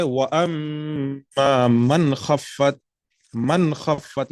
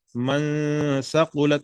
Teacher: اخفا نہیں کر رہے، اظہار کر رہے ہیں. من خفت، نون کو ظاہر کر کے